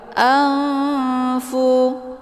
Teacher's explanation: Cara bacanya, nunnya disamarkan kemudian siap-siap menuju ke huruf fa. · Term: ikhfa awsat